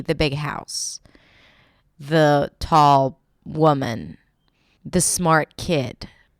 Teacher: Notice how the stress falls on that last word, house.